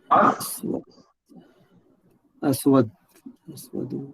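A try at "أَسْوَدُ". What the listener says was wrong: جی حرکت پوری پڑے سر جی.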